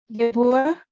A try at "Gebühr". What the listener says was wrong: Die Gebühr. The U is a little bit softer. Not Gebühr, but Gebühr. Die Gebühr.